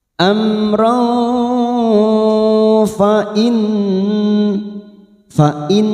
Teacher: ada nun yang bertasdid gunnah musaddadah, kita tekan selama 3 harokat, kita dengungkan